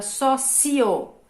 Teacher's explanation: eu tenho duas vogais na mesma sílaba, uma é vogal e a outra é considerada semivogal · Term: ditongo